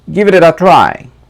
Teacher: the T becomes D and goes with a